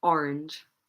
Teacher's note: Where do we put stress in the word orange? Orange. On the first syllable